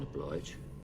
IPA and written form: əˈblaɪdʒ (oblige)